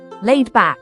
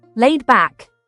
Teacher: you can break it down as laid and back with the emphasis on laid